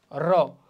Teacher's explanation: র যখন আমরা উচ্চারণ করি তখন কিন্তু কি হয়, একটু কম্পনের সৃষ্টি হয়। যেমন জিভ কম্পিত হয়ে উচ্চারিত হয় বলে এ জাতীয় ধ্বনিগুলোকে বলা হয় কম্পনজাত ধ্বনি